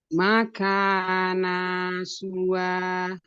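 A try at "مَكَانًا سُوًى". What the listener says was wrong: Ini tanwin, ketemu sin. Jadi harus dengung. Boleh diulang, tapi pas baca nannya, lidahnya jangan nempel ke langit-langit. Tapi pas baca nannya, lidahnya nggak boleh nempel ke langit-langit.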